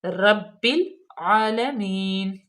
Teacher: با مشدد ہے، اس کو ہم سختی سے پڑھیں گے۔ جو مشدد لفظ ہوتا ہے وہ دو ہوتے ہیں، ایک دفعہ وہ پچھلے لفظ کے ساتھ پڑھا جاتا ہے اور ایک دفعہ اگلے لفظ کے ساتھ، ٹھیک ہے۔